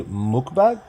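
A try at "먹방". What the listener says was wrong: So it's mok. It's like a longer O. Yeah, mokbang. So it's like bang, except it's more. I mean, bang's like the way you butcher it in like English. It's like bang.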